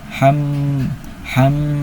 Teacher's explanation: Artinya cara bacanya itu gunah itu artinya dengungan. Jadi didengungkan sebanyak dua harakat.